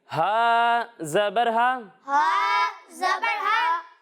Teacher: जब हम हा की अदायगी करेंगे तो इसे हलक के निचले हिस्से से पढ़ेंगे